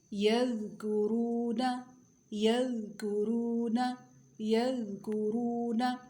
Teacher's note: ذال کی آواز کیسی ہوتی ہے؟ باریک اور نرم ہوتی ہے